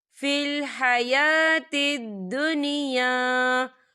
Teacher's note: قوله فی الحیات الدنیا، فی الحیات الدنیا، دیکھیں حیا، یا کے اوپر کھڑی حرکات ہے تو ہم اسے دو حرکت کے برابر کھینچیں گے